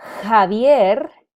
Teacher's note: The J in English has a J sound, but we don't have a J sound in Spanish. So the J has a function of actually producing an H sound. So the name Javier is spelled with the J, and that helps us produce the H sound.